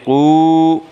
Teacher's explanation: من یقول، قو قاف کے اوپر پیش کی حرکت ہے، واو کے اوپر جزم ہے، واو ساکن سے پہلے پیش ہے، واو مدہ ہوگا، واو مدہ کو ایک الف کے برابر کھینچ کر پڑھیں گے